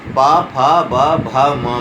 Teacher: प फ ब भ म में दोनों होठ आपस में स्पर्श करते हैं और हवा होठों को स्पर्श करके बाहर निकलती है। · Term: ओष्ठव